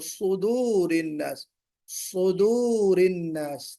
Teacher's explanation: سواد کی جو صفت ہے اس کے اندر دیکھیے استعلا ہے، یعنی موٹا پڑھا جانا ہے